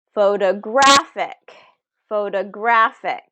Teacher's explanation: 2 small O's, a big O, and a small O again.